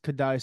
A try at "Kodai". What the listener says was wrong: why do you say Kodai's name like that? Kodai. It's almost like Kodair.